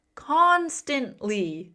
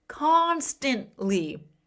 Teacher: The stress is on that first syllable.